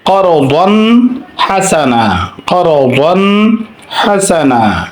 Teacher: এখানে দোয়া তালিফের উপর তানবিন আছে, এটা হচ্ছে এরপরে হা আছে, তাহলে দোয়া তালিফের পরে তানবিনের পরে হা আসলে এজহার করে পড়তে হবে